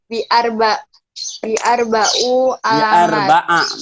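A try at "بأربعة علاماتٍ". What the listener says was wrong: Bi'arba'a. Kalau ini bi'arba'a. Tin. Tin. Dibaca. Baris huruf akhirnya dibaca. Bi'arba'a alamatin.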